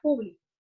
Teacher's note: Público, cuando lleva la mayor fuerza de voz en la antepenúltima sílaba, hace referencia a persona.